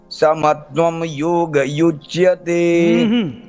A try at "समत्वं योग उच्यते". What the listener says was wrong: समत्वं योग उच्यते। हाँ, युच्यते नहीं उच्यते, उच्यते है ना। हाँ, ऊ है उच्यते, ठीक है। हाँ, वो ध्यान देना। समत्वं योग उच्यते, वो गलत आदत बनी हुई है, सुधार लेना उसको। समत्वं योग उच्यते, उच्यते, ठीक है।